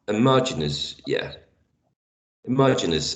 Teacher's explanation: the second syllable is the one stressed